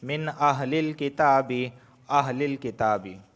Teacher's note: ود کثیر من، اب یہاں پر دیکھیں نون ساکن کے بعد حمزہ آیا ہے اور حمزہ حروف حلقی میں سے ہے تو یہاں پر صرف اظہار ہوگا، غنہ نہیں ہوگا